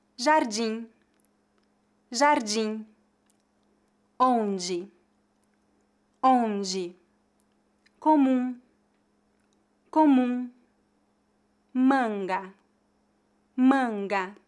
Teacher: as vogais são nasalizadas quando seguidas pelas letras n ou m ou quando tiverem o sinal gráfico chamado ti que é aquele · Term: vogais nasalizadas